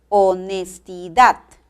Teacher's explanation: honestidad la mayor fuerza de voz recae en la última sílaba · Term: acento